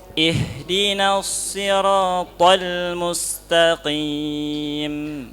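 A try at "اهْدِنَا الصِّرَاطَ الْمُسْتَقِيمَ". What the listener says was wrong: Jangan disentak ya tol jangan disentak.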